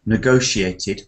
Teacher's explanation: let's get the stress pattern, it's second syllable